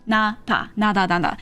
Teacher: You just get a little more air, a little more roundness when you do the D and you like you remove your tongue from like behind your teeth, that roof of your mouth faster, right?